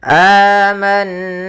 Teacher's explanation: Di sini ada bacaan gunnah, yaitu suara nunnya kita tahan dulu. Suara n-nya.